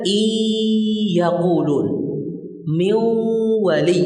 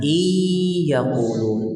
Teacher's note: sisa daripada nun, sebagian dari sifat nun atau sifat nun masih ada, yaitu gunnah.